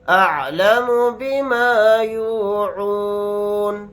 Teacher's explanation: نون کو ساکن بنا کر پڑھیں گے حالت وقف میں